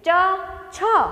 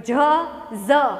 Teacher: ચ, છ ઓછું ઘર્ષણ થાય છે, પણ જ, ઝ ઘર્ષણ વધુ થાય છે